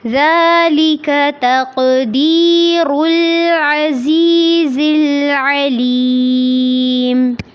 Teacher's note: العزیز میں یا ساکن سے پہلے زیر ہے، اس کو لمبا کرنا ہے